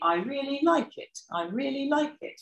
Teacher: when we've got a falling toe on our nuclear syllable there we've got a head pattern that starts on the word um really on the first syllable of that it's a high head and then we have a low level tail at the end